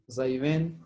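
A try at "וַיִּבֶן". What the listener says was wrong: Vayyiven. The first letter is Vav.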